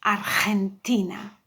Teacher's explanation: the GE is read like a very aspire H